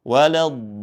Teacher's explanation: Di situ terdapat huruf mad lazim kalimi mustaqal yang mana mad tabi'i bertemu dengan huruf yang bertasydid, maka cara membacanya dengan dipanjangkan 6 harokat, lalu kemudian ada an-nabr, ya, ada tekanan.